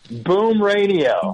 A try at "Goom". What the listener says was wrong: Goom. Not the sound you made in the potty, not boom. Goom with a G.